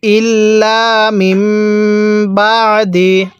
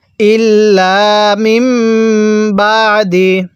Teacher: আমরা এখানে মিমকে মিমের সাথে লাগিয়ে নাকের বাঁশি দ্বারা গুনাহ করব।